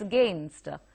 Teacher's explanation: The sound is very slight at the beginning, and the focus or the emphasis is on gain, so it's against.